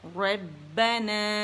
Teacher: رب را را با ربنا, را موٹی با باریک مشدد. رب با میں شدہ ہے, ٹھیک ہے, اور مشدد ہے تو اس کا جمع واضح کریں گے.